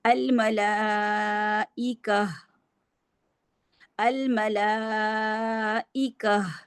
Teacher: ہا کو ہا کا ہمس واضح کریں گے تو ہا واضح ہوگی. اگر ہم کہہ دیں گے نا الملائکہ، کا کر دیں گے تو کاف زبر الف کا بن جائے گا.